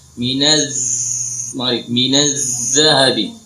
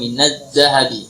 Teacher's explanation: Makhraj zal harus mengalir suara.